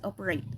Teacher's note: the second syllable vowel is reduced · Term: SCHWA sound